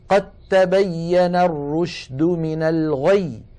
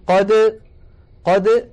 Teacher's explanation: تبين، التقت هنا الدال والتاء وهما من المخرج نفسه، فنحول الدال إلى تاء ثم ندغم التاء في التاء، فيصير النطق بتاء مشددة ولا يبقى للدال أثر